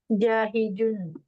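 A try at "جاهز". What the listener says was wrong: Ini nizal, zai, nizai. Kayak zal, zai, jahizun, bukan za, zai.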